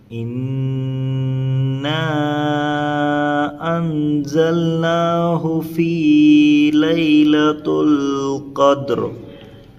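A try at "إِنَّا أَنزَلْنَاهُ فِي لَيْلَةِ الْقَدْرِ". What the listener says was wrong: یہاں پر ایک بڑی غلطی ہے اور یہ یہاں پر غنہ ہونا، بس آپ یہاں لیلۃ ال پڑھ رہے ہیں، ہاں، اور یہاں پر ان میں اخفا کرنا۔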